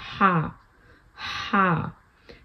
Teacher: जब आप हा कहते हैं, हा मिडल ऑफ द थ्रोट से, तो एक हवा सी आपके हलक में से निकलती है